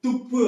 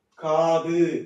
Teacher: காது அப்படின்னு சொல்லும்போது அந்த து காது மென்மையா கேக்குது இல்லையா இப்ப குறைந்து ஒலிக்குது இல்லையா அப்போ அதுக்கூடிய ஒரு மாத்திரையில இருந்து அரை மாத்திரையாக குறைந்து ஒலிப்பதால் இது குற்றியல் லுகரம் அந்த உகரம் வந்து குறைந்து ஒலிக்கறதுனால இது குற்றிய லுகரம்.